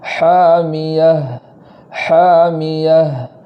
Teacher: تا پر وقف کی حالت میں اسے ہا کے ساتھ پڑھیں گے جزم کے ساتھ اور آواز کو جاری کریں گے. اس طریقے سے پڑھیں گے حامیہ حامیہ.